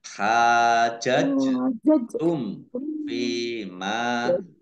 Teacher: mim sukun bertemu dengan huruf fa bacaan idhar safawi dibaca jelas